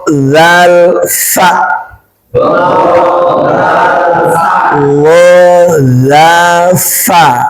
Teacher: ujung lidah bertemu ujung gigi depan atas